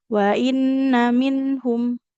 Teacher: Kemudian kembali mengingatkan ketika kita membaca nun sukun pastikan bunyinya tidak terburu-buru ya. Pastikan huruf nun sukunnya mengalir dulu suaranya.